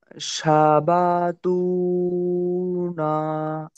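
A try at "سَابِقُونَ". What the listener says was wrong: সাবাকুনা। এটা কপ আছে, আপনি তা পড়ছেন কেন? মাথা মোড়ে দুটো নক্ত উপরে থাকলে কি হয়?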